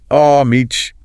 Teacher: Some Americans might drop the H sound, oh, meech.